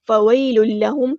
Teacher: ادغام بلا غنہ ہو رہا ہے تو ٹائم نہیں دینا